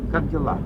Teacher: Make the stress on the last syllable.